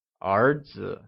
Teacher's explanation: The word son translates as 儿子, and it is pronounced using the mid-rising tone.